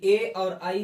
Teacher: ए और आई का जो उच्चारण होता है वो कहां से होता है भाई? कंठ और तालु से मिला करके होता है। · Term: कंठ तालव्य वर्ण